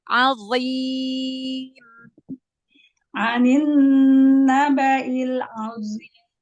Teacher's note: Azim. Tingkat naikkan pangkal lidahnya. Tetap, walaupun kasroh tebalkan.